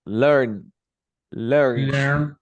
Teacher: N. This is gonna be a voice sound, so you pronounce like D.